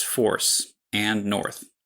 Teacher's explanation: For me that vowel is always the same and quite high, just like in CHOICE. · And then there's FORCE, and NORTH, which I pronounce the same way.